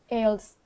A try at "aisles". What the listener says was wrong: This is a tricky word because it starts with an A-I, which should be A, right? But we actually pronounce this one like this. Aisles. Just like you say aisle, I'll be there in a minute. Aisles.